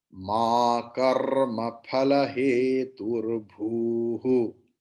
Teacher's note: after bhu, please split it, and after bhu, please add visarga bhuhu